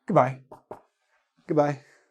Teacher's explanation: I barely even say the O's